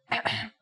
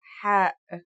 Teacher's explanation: It sounds like the sound you make when trying to cool your mouth and throat after eating something very spicy. The closest English counterpart to the sound is H. The only difference is that it comes from a point deeper down in your throat